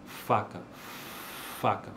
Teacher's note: faca é uma consoante desvozeada não vibra